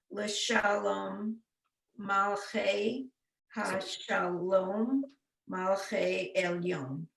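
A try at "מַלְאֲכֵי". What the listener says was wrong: So the second to last word and the fourth to last word, those are the same words. Under the lamed, you have to give that short vowel sound. shva. It's the shva. So instead of it being malache, it's maluche. Well, maybe you're right. Malache. No, I take it back. Malache.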